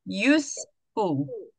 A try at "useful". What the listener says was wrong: I can't hear you S. Useful.